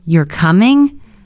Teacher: Go up at the end. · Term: rising tone